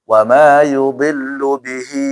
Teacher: Dan juga ingat, bihi itu panjang, matsilah ya. Tidak boleh ada gunnah.